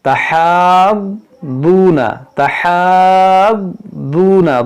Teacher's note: دعات دیکھیں مشدد ہے تو اس کو پڑھنا ہے 2 بار